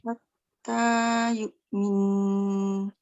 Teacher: Dia tak panjang antara mim dengan nun. Dia panjang terus pada nun tu.